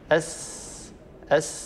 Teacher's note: صوت السين يتسفل ويخرج إلى خارج الفم ولا يتصعد إلى أعلى الفم